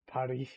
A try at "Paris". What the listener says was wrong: It's like Paris, but without the S.